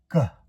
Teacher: Also, the airflow stops G. And it's a sound that's coming at the back the back of your throat. Your vocal cords have to vibrate and you have to have a burst of air coming through at the same time.